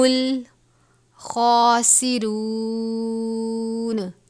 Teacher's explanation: خا کو پر پڑھیں گے کیونکہ یہ حروف مستعلیہ میں سے ہے